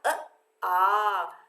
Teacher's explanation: आ में हमारा अ से दुगना समय लगा है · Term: दीर्घ